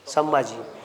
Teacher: अनुस्वाराच्या पुढे का आला भच्या लाईनीतला अनुनासिक म